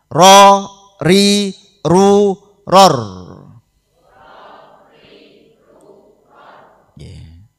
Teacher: ujung lidah agak ke dalam mengenai gusi gigi depan menjadi makhrajnya huruf ro